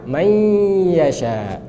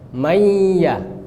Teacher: Nah, nun hilang tapi gunnahnya tetap. Maka lidah kita nggak boleh di makhraj nun lagi. Makhraj lidah kita udah di makhraj ya, karena dia idgham. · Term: idgham bi gunnah nakis